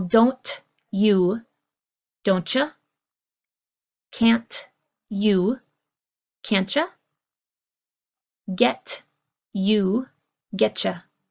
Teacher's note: When we have a T and a Y together, it becomes this sound of cha